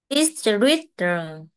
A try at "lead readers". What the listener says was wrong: Chữ lead kéo dài nè. Lead readers.